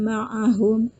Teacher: Nah, ketika ada mim mati bertemu dengan mim, maka cara membacanya harus digunakan atau didengungkan 2 harokat, ditahan 2 harokat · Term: idgham mimi